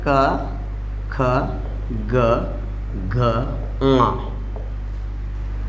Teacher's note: ये सब कहाँ से बोले जाते हैं दोस्तों, कंठ से बोले जाते हैं